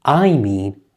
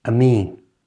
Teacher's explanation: In natural speech, the I often changes to a soft a sound. So, instead of I mean, it becomes a mean.